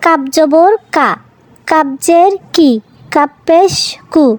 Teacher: এবারে সর্বশেষ যেই বিপজ্জনক অক্ষর দুটি আমরা পড়ব সেই অক্ষর বা হরফ হলো কাফ এবং কফ। জিহ্বার গোড়া থেকে একটু সামনে এগিয়ে তার বরাবর উপরে তালুর সঙ্গে লাগিয়ে আমরা উচ্চারণ করব কাপ।